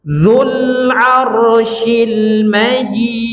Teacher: Jangan sampai bacanya janya pakai hujung lidah. Ja itu makhrajnya bukan di hujung lidah tapi wasatul lisan. Di tengah li tengah lidah.